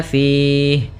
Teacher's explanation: panjangnya boleh dua harakat, boleh empat harakat dan boleh pula enam harakat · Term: mad arid lukun